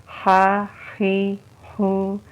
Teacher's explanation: ہا ہم حلق سے نکالیں گے، حروف حلقی ہے ہا، اس کے ساتھ تھوڑا سا ہوا کا پریشر ہوتا ہے